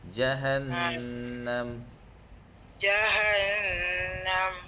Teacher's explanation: nun yang bertasyd kena baca dua harakat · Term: Wajibal ghunah, wajibal gunnah